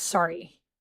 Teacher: No, there's no O. It's an A. It becomes an A in America.